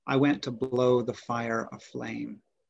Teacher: our stresses are falling on went, blow, fire, and flame · the stress is on the even-numbered syllables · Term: iambic tetrameter